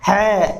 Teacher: glottal होता है कंठ द्वार, इसको हम प्रोड्यूस करते हैं है, अंदर से इसकी ध्वनि प्रोड्यूस होती है